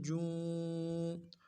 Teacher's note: جیم کھڑی زیر جی، جیم الٹا پیش جو، الٹا پیش کو بھی ایک الف کی مقدار میں کھینچ لیں